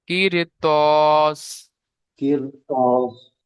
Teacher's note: র বারিক হওয়ার কথা ছিল, কিন্তু হুরুফে মুস্তালিয়া ত এসেছে বাম দিকে পরে, সেই জন্য এটাকে পুর করেই পড়তে হবে।